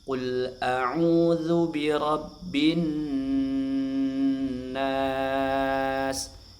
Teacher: Ya, nun tasdidnya dibaca ghunah agak lama ya. dua harakat ghunah.